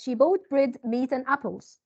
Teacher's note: when we have a list, so our intonation goes up, up, up, and then down.